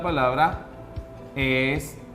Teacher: Entonces tenemos que llevar la mayor fuerza de voz en ta